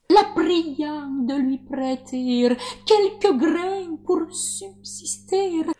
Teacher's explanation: Du côté des consonnes, ce qui frappe le plus, ce sont les R, qui ne sont pas des uvulaires comme en français moderne, mais des airs roulés à l'italienne, c'est-à-dire des alvéolaires.